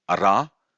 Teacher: Ra, we are lifting up the tip of the tongue and touching the hard palate. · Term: retroflex